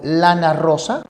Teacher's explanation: la punta de la lengua sube y choca con los alveolos es decir con esas bolsas esas cavidades donde se insertan en